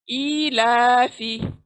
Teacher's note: फी क्योंकि एक ही आवाज है इसलिए बहुत जल्दी कट ऑफ कर डालेंगे। आवाज को कट ऑफ करना है, खींचेंगे तो फिर एक आवाज है वो भी लंबी हो जाएंगी, इसलिए हमको आवाज को छोड़ देना है।